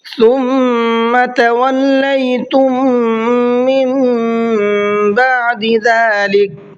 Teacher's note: ثم کے میم میں غنہ کریں گے اس لیے کہ میم پر تشدید ہے، اور جب میم پر تشدید ہوتی ہے تو میم میں غنہ ہوتا ہے۔